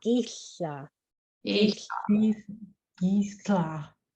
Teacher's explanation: you put your tongue behind your teeth, like you're going to say the L, but then you hiss like a cat off the side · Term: LH